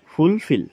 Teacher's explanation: the word fulfill is pronounced with more force on the second syllable ঠিক আছে আৰু ফুলফিল শব্দটো পঢ়োতে যেটো সেকেন্ড সিলেবল আছে এটুত